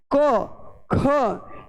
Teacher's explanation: जैसे अपने एक उदाहरण को समझ सकते हैं, जैसे क ख, जब अपने क ख का उच्चारण करते हैं तो ये अचानक बाहर निकलते हैं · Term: केवल स्पर्शी